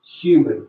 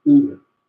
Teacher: One surprising feature is the use of the H sound. Now, in most British English accents, actually, it's not used, but in RP, it is used.